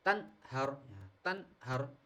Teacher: Nun sukun bertemu dengan ha maka dibaca jelas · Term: Izhar halqi